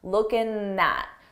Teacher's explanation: Here, it's very common to take a word that ends in ing and drop the G sound, that G sound, and just end it on looking at. But notice I combine it with the word that comes next because it's a vowel, looking at.